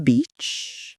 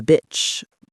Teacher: one of the most commonly confused English sound distinctions, the tense E versus the lax I